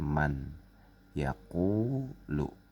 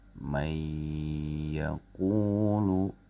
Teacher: Tapi karena di sini ada nun mati bertemu ya, maka nun matinya, ya, dimasukkan ke dalam huruf ya. Jadi masukin ke tasdid di sini. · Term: idgham bil gunnah